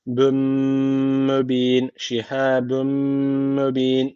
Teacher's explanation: tenvinden sonra mim gelmiş. O zaman burada idgam-ı melune var. Guneli bir şekilde bağlıyoruz. · En sona meddi arız tecviti var. Bir elif uzatarak duruyoruz.